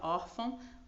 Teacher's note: a sílaba tônica né é a penúltima não a última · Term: paroxítona